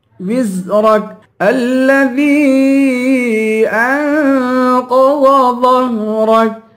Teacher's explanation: الذي ذال کو یا سے ملا کر یا کو تین الف کی مقدار کھینچ کے پڑھیں گے. انقض، ان پہ اخفا کریں گے، قاف اور ضاد دونوں کو موٹا کریں گے.